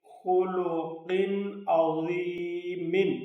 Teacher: ادھر تنوین کے بعد حروف حلقی میں سے عین ہے، اس لیے یہاں اظہار ہوگا